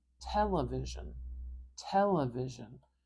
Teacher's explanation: I hear the stress in this first syllable, so I'm going to put this little straight apostrophe here, and that tells me that the television, is the strongest part.